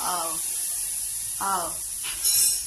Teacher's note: आणि नंतर कॉलेजला गेल्यावर आम्ही फोनेटिक्समध्ये शिकलो इट्स आव, आव, लेबिओडेंटल, लेबिओडेंटल, दात आणि लोअर लिप एकमेकांना टच होऊ पडेल.